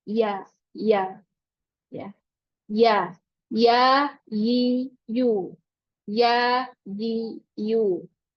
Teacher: tengah lidah bertemu dengan langit-langit di atasnya, tapi dia sangat renggang. Sangat renggang jaraknya, lebih jauh dibandingkan dengan makhraj huruf shin. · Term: huruf ya